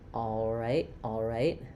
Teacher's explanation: I'm just making the dark L with the back of my tongue instead of lifting the front of my tongue.